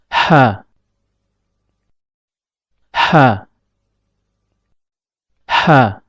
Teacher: tatkala mengucapkan huruf ha, epiglotis agak sedikit mundur ke belakang